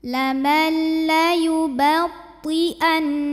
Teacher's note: Karena nun sukun menghadapi huruf lam, maka nun sukun dimasukkan langsung ke lam tanpa disertai dengung. Lamal ditekan aja, jangan ditahan. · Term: idgham bila gunnah